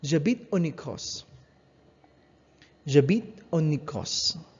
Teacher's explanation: if the next sound is vowel, then the N is simply pronounced with an N sound, and then you connect it with the next vowel sound